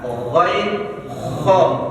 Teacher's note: Ketiga, ujung tenggorokan, ada ghain sama kho.